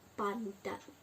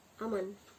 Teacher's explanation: Misalnya perubahan bunyi N yang biasanya dalam bahasa Indonesia diucapkan secara apikoalveolar seperti pada kata aman, tetapi dalam kata pandan nasal sebelum diucapkan secara apikopalatal. Nah, perubahan nasal apikoalveolar N menjadi nasal apikopalatal ini terjadi karena pengaruh secara regresif dari bunyi letup palatal. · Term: asimilasi regresif